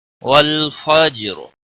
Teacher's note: والفجر، واللام کو ہلانا نہیں، جیم ساکن پر قلقلہ ہوگا، را وقف کی صورت میں ساکن ہوگا اور را پر بھی پڑی جائے گی، کیونکہ را ساکن سے پہلے جیم ساکن، اس سے پہلے زبر ہے، اس لیے پر پڑا جائے گا۔